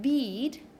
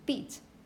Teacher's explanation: when you have after this long vowel you have a voiceless consonant it's going to be shorter